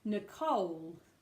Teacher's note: you've got to put that stress on the second syllable